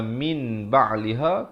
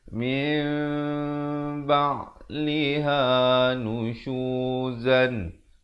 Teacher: Iqlab maksudnya kita menukarkan daripada bunyi nun kepada bunyi mim dengan kadar 2 harakat. Asalnya min ba'liha kena baca min dengan kadar 2 harakat.